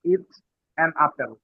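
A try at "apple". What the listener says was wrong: এটা আপেল না, ইংরেজি ইয়া হলো অ্যাপল, অ্যাপল। হ্যাঁ, অ্যাপল।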